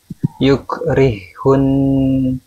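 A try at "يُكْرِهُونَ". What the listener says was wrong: Nah, antum jangan sampai terputus ya, karena sifat ha, sifatnya ada sifat rokhwah. Nah, yukrihun, rihun, masih mengalir sampai ke dia itu berharokat. Yukrihun, gitu.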